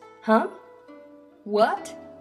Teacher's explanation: The second tone is a rising tone when asking a question or showing surprise.